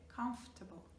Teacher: we do not pronounce the FO